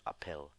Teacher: it just sounds like a normal P with a slight breath at the end of it to denote the H